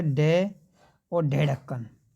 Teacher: जीवा ऊपर उठकर झटके के साथ में नीचे गिरती है